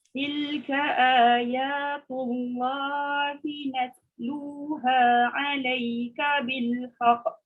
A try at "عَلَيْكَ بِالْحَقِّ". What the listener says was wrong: Jangan cepat kelantunan dia. Alaika bil haqq.